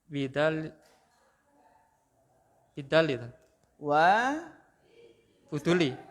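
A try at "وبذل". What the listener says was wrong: Setelah waw itu bukan ba huruf jar, tapi dia masuk dalam satu kata. Itu bukan ba huruf jar.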